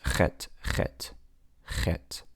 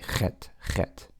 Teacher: The same sound that you would make if you have a mosquito stuck in the back of your throat or you swallowed a fly. You say Chet, Chet.